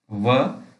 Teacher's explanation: दंतोष्ठ ऊपर के दांत, निचले होंठ, व सघोष अल्प प्राण है